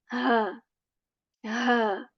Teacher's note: This ha comes from the portion of our throat that is near to our chest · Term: ha letter